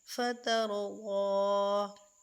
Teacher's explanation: یہ را ساکن اور اس سے پہلے والے حروف تا، یعنی تا کے اوپر زبر ہے، تو اس را کو ہم پر کریں گے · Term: را کو پر